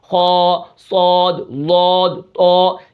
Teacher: زبان کی جڑ اوپر کی طرف اٹھتی ہے تو پھر یہ حروف موٹے ادا ہوتے ہیں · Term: استعلاء